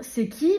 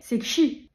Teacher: on constate aujourd'hui qu'il y a des afriqués qui se créent, notamment dans le parler des jeunes. Ils vont pas dire c'est qui, mais c'est kshi.